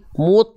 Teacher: angkat pangkal lidahnya jadi bunyi vokalnya bukan E kalau pantulannya pada huruf tebal bunyi vokalnya bukan E kalau huruf tipis bunyi pantulannya e contohnya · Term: huruf tho